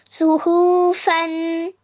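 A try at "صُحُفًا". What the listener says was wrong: सुहूफ नहीं, दो दो जबर है ना। सुहूफन वक़फ़न। सुहूफा। ये दो जबर की जगह एक जबर पढ़ना है ना वक्फ में।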